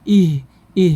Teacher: huruf H ini makhrajnya tempat keluarnya itu dari pangkal tenggorokan atau aqsal halqa Jadi bukan di dada keluarnya hurufnya tapi di pangkal tenggorokan ih